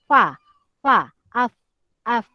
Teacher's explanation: Bibir bawah dan gigi atas keluar bunyi huruf fa